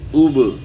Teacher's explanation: با حروف قلقلہ میں سے ساکن ہے تو اس میں قلقلہ بھی ہوگا